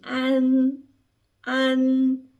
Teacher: termina aqui na ponta da língua quando termina com N